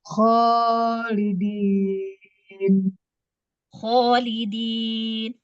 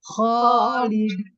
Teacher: untuk menebalkannya itu dengan menggunakan pangkal lidah ya, mengangkat pangkal lidah ya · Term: tafkhim